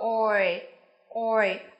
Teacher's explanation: âm oi của chúng ta sẽ nối từ âm o sang âm e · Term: nguyên âm đôi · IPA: /ɔɪ/